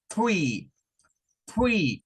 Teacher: esto para decir 3, debemos de decirlo como three, three, lengua hacia afuera.